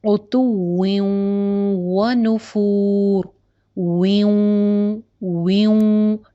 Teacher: یہ جو واو اور یا ہوتا ہے نا, اس کے اوپر کیا ہوتا ہے کہ نون کی آواز ہلکی سی باقی رہتی ہے, بالکل ختم نہیں ہو جاتی, سلائٹ سی آواز باقی رہتی ہے. عتوّں و نفور, واو کے نیچے 2 زیر تنوین, اس کی ایک زیر کو آپ اگلے والے واو میں مرج کریں گے اور نون کی ہلکی سی آواز باقی رکھیں گے.